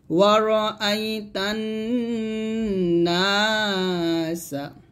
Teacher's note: নাতে টান দিবেন আর তাতে তান এখানে গুণ্য করবেন